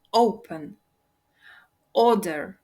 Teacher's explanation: тут наголос падає на перший склад